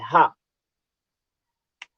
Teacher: जो हा है ये काकल्य ध्वनि है, यह स्वर यंत्र मुखी है